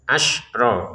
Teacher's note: Ini harus dibaca jelas. Asro betul-betul mati ya. Tidak ada pantulan.